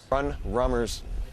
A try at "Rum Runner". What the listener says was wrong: You said Run Rummer. It's Rum Runner.